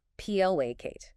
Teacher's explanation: Two syllables. Stress on the first. PLA Kate. This means to make someone less angry or hostile.